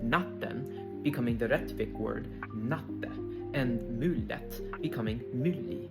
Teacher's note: The N and T are often dropped in unstressed suffixes